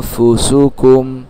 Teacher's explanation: গুন্নাটা আমি নাকের মধ্যে নিচ্ছি।